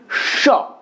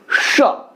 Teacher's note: জিভটা তালুর কাছে যাচ্ছে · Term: তালব্য স